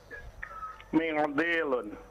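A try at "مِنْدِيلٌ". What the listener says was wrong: Tidak usah diikhfa. Mendilun biasa saja.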